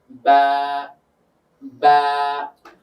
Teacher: বায়ের মাখরাজ যদি আমরা দেখি, বাটা হয় ঠোঁট থেকে। তো ঠোঁটের কোন জায়গা? ভিজা অংশ থেকে।